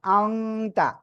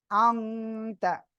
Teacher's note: এই যে নুন সাকিনের পরে ইকফা অক্ষর তা, নাকের ভিতরে নিয়ে গুণনা করতে হবে।